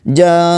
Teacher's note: وقف کرتے ہوئے حمزہ کو ساکن کر کے جھٹکے کے ساتھ پڑھیں گے